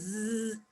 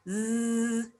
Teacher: It's a voiced consonant. Okay, voiced consonant. It is alveolar. We produce it at alveolar ridge. What do? We bring the blade of our tongue against alveolar, and we say zzz, and there is a friction, audible friction, fricative sound.